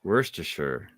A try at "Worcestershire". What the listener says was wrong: No R, just Worcester. Worcestershire.